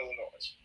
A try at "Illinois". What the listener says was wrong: I didn't think people in Illinois pronounced the S.